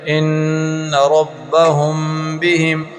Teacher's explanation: میم ساکن کے بعد با ہے اس کی غنہ ہوگا